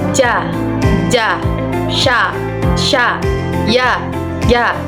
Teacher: Yaitu dengan tengah lidah menempel pada langit-langit mulut, seperti ja, ya, sha. Dalam huruf ja itu tidak disertai dengan adanya nafas